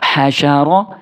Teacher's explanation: रा साकिन से पहले लफ्ज के ऊपर जबर हो तो रा को मोटा करके वक्फ करना है